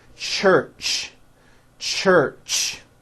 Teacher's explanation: let's start with the ch it's a common sound in english it's a combination of the t sound and the sh sound · it's an unvoiced sound and you can hear the sound for example at the beginning and at the end of the word church